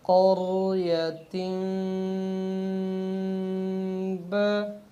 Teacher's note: اور اس میں غنّہ کرنے کے دو طریقے ہیں، یعنی اقلاب میں ایک تو ہم نرمی سے کر سکتے ہیں، جیسے قریتن با، یعنی با اور میم کے درمیان ہم پورے ہونٹوں کو بند نہیں کریں گے، جیسے قریتن با، بلکہ ہونٹوں کو ہلکا سا نرم رکھیں گے کہ ہلکے ہلکے کھلے ہوئے محسوس ہوں گے، قریتن با، اس طریقے سے۔